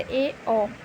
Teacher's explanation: जिन स्वरों के उच्चारण में मुख द्वार आधा बंद रहता है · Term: अर्धसंवृत